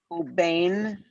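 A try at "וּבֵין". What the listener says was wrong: but I thought I heard a bet instead of a vet. Maybe I'm wrong. Uvain, which means the same as ubain, but that's a case of the strong vowel dropping forcing the dagesh to drop. Again, bain means between. If you have an u, it becomes uvain, which means and between.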